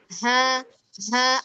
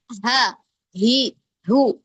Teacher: ada hawa hangat di yang berhembus ke bagian telapak tangan kita. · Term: hembusan